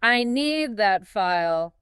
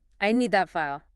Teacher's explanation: if you say it with a flat clipped rhythm, it sounds like an angry demand from a boss · If you say it with a soft rhythm and your voice goes up at the end, it's a polite request to a coworker.